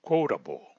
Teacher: la consonante T en la palabra quotable y en muchas otras palabras, como verán más adelante, tiene el mismo sonido de nuestra consonante R en español